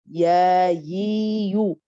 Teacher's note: Quand vous allez prononcer ya, vous allez voir que la langue du milieu, il va s'orienter vers le haut. Et donc, la différence entre le ya, c'est que cet espace-là, cet espace qui est là, il est beaucoup plus grand que cet espace, l'espace qui se trouve ici.